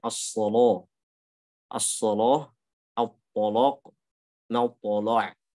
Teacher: Untuk riwayat Warsh itu kaidahnya lam sebelumnya huruf tebal itu dibaca tebal. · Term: taghlidh